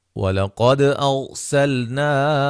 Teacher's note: قاف کو موٹا، دال پہ قلقلہ، را کو موٹا ادا کریں گے